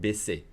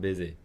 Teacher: make sure you pronounce the double S with an S sound, solid S sound. Baisser, not baiser.